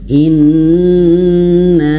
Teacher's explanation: Dan ditahannya ini harus lebih lama durasinya daripada mad thobi'i. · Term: nun bertasydid